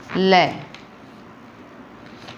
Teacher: इसमें देखो पार्श्व शब्द का शाब्दिक अर्थ होता है बगल, अर्थात जिस व्यंजन का उच्चारण करते समय वायु जीभ के दोनों बगल से बाहर निकल जाती है वह पार्श्विक व्यंजन है